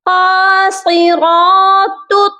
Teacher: قاف کو بھی موٹا کریں گے، صاد کو بھی اور را کو بھی موٹا کر کے پڑھیں گے۔ تا کو طا کے ساتھ ملائیں گے، یعنی نقطوں والی تا کو موٹے طا کے ساتھ ملا کر پڑھیں گے، اور یہاں پر مخرج کا خیال رکھنا ہے۔